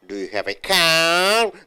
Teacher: The car should be going up. Intonation, raise up. For yes or no, last word should be stressed.